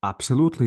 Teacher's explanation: there will be vibration and because there is vibration B is voiced and P is voiceless because p is voiceless absolutely I have